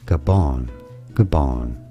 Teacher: In English, though, this is generally said as Gabon, Gabon, with an emphasis on the second syllable